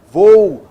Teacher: a semivogal U se apoia na vogal O para produzir a mesma sílaba, tá legal? Então a semivogal não constitui sílaba sozinha, ela precisa da vogal, tá bom?